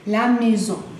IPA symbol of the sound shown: ɛ